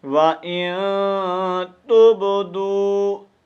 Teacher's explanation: با ساکن ہے تو یہاں با کو کلکلا کر کے پڑھنا ہے